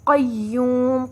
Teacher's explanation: قاف موٹا پڑھا جائے گا اور آواز لمبی ہوگی واو پر